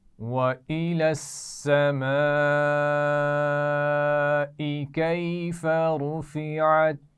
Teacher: کیفا میں یا لین ہے اور رفعت میں را کو موٹا پڑھا جائے گا